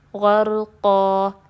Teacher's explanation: وقف بالابدال، کیونکہ ہم ایک چیز کو دوسری چیز میں بدل رہے ہیں، دو زبر کو الف مدہ میں بدل رہے ہیں